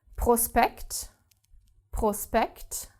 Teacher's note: then S and P are separated and therefore do not create this SHP sound